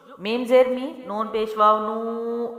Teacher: میم زیر می، نون پیش واو نو، لمبا کریں گے کیونکہ واو ساکنہ سے پہلے نون پہ پیش ہے تو مد ہے، لمبی کریں گے